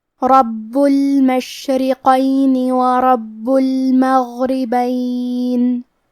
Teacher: کیونکہ را پہ زبر ہے لہذا یہاں حرف الرا کا حکم ہے تفخیم. ہمیں حرف الرا کو بھاری آواز میں پڑھنا ہے. با پہ تشدید ہے تو ہم 2 حرفی کے برابر با کو پڑھیں گے کیونکہ تشدید کی اصلیت 2 حرف ہے. · ہمیں حرف الرا کو بھاری آواز میں پڑھنا ہے. با پہ تشدید ہے تو ہم 2 حرفی کے برابر با کو پڑھیں گے کیونکہ تشدید کی اصلیت 2 حرف ہے. جیسا کہ یہاں حرف البا ہے تو یہ 2 با ہے، با ساکن اور با متحرک.